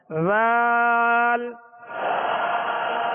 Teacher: سرا زبان اوپر کے سامنے والے 2 دانتوں کے اندرونی کنارے اس کا مخرج ہے، اس کو نرمی کے ساتھ پڑھنا ہے